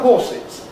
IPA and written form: ˈhɔːsɪz (horses)